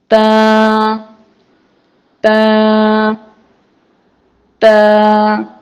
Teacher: تا، دال اور طوا تینوں کا مخرج ایک ہی ہے، یعنی زبان کی نوک تا کو ادا کرتے وقت زبان کی نوک کو اوپر کے دانتوں کی جڑ سے لگائیں گے تو تا ادا ہوگا۔